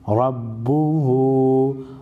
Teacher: را پر زبر ہے، را کو موٹی پڑھی جائے گی